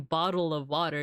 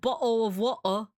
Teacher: you're essentially like closing your throat uh just for a second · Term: glottal stop